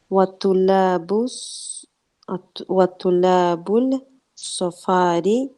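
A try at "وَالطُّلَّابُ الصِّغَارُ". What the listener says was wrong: We're not going to say. You can't say at-tulabul and pronounce the lam because the sad is a sun letter. So as-sigharu, as a ghain.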